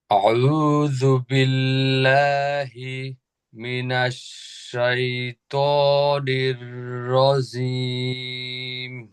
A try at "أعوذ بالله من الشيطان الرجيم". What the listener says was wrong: হ্যাঁ, কিন্তু ওই যে একবার থামা যাবে না পুরা। আউযু বিল্লাহি মিনাশ এরকম হি বলে থামা যাবে না, মানে জারি রাখতে হবে, একসাথেই পড়বেন কিন্তু বোঝা যাবে যে এটা আলাদা আলাদা করে পড়তেছেন আপনি। আউযু বিল্লাহি মিনাশ শাইতানির রাজিম।